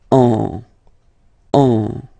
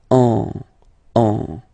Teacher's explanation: you will get what we call nasal, so it goes in your nose, and then you get the sound en. Okay, if you listen carefully, well, basically you don't listen, or you don't hear, sorry, any N in my pronunciation.